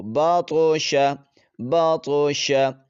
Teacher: طا کو تھوڑی سی جنبش دے کر ہلا کر پڑھیں گے تاکہ اس پر قلقلہ ہو